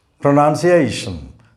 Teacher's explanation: This word has 5 syllables and the fourth syllable comprises only one vowel letter A. The letter A here represents the sound A, and this syllable is stressed.